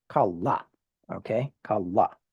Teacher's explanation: you put emphasis on the last syllable, kalla, okay?